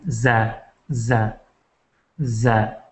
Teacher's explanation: ایک سیٹی نما آواز نکلتی زا میں